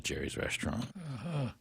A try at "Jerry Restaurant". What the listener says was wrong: It's by the way, it's Jerry Restaurant. There's no S in Jerry Restaurant. It's Jerry Restaurant, yeah.